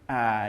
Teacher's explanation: Ain dia enggak boleh masuk ke khaisyum karena makhrajnya adalah alh tenggorokan maka salah kalau bacaak tapi tidak